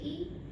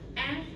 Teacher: Ketinggian dari lidah ya. And we will describe E as a relatively closed vowel and A as a relatively open vowel